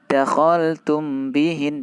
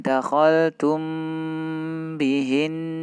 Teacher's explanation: Untuk yang ikhfa syafawi, namanya ikhfa syafawi berarti harus diikhfakan, disamar-samarkan, ditahan 2 harokat. Tidak boleh langsung, misalnya yang contoh yang ini, tidak boleh kita baca dakhaltum bihin, tidak boleh, tapi kita ikhfakan dakhaltum bihin.